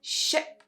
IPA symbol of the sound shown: ɪ